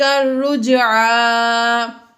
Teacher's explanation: یہاں پر جیم حروف قلقلہ میں سے ہے، جیم حروف قلقلہ میں سے ہے اس لیے یہاں پر قلقلہ ہم نے ظاہر کر کے پڑھا